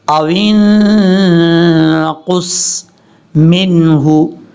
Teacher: نصفہ او انقص، قاف حروف مستعلیہ میں سے پر پڑھیں گے. قاف کے بعد جو صاد ہے، صاد بھی حروف مستعلیہ کی وجہ سے پر پڑھا جائے گا